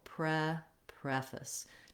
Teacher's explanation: Okay, so when I'm saying preface, another strategy you can use is lengthen on that first syllable, preface. Try to be very quick and light and reduced on that second syllable.